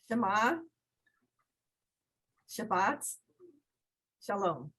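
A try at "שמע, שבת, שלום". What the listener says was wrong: Right, very nice.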